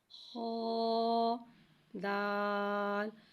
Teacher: خا حرف مستعلیہ ہے لہذا اسے ہم موٹا پڑھیں گے، اس کی آواز حلق سے ادا ہوئے گی۔ خا دال۔ ہا کو ایک الف یعنی 2 مقدار کھینچ کے پڑھیں گے۔